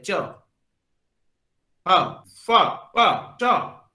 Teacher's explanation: ये जो साउंड है इसमें कोई भी जो वाइब्रेशन है वो आप महसूस नहीं करते हैं। किसी भी तरह का जो एक एयर होता है आपके मुंह से बाहर नहीं आता है, लेकिन वही दूसरे जो साउंड है वॉइस है, एक तरह का एयर आपके मुंह से बाहर आएगा, आप वाइब्रेशन जो है उसको महसूस करेंगे। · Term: वॉइसलेस